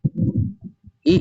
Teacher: इ ई का उच्चारण स्थान तालव से होता है